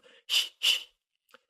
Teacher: You take the tongue position of a y like in yu or yah or y where the middle of your tongue is near the roof of your mouth and then you bring your tongue up even further almost pushing against the roof of your mouth and then you just sort of squeeze air through that space to make a kind of hissing sound